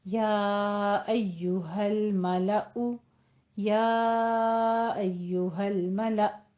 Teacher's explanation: جھٹکے کے ساتھ حمزہ جب ساکن ہو گیا تھوڑا سا جھٹکا دے کر وقف کر دیں گے